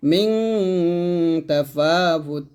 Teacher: নুন সাকিনের পর তা আসছে, এটা ইকফা গুন্না